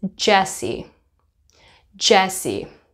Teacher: it feels the same in my mouth except I am creating some vibration in my throat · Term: J sound